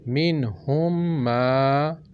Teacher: میم ساکن کو میم متحرک میں ادغام کر کے غنّے کے ساتھ پڑھیں گے ہم